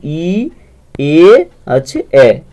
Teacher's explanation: প্রসারিত স্বরধ্বনি হচ্ছে ই এ আছে এ